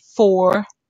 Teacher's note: Tenths, TENTHS, with a TH sound. Not tens, but tenths.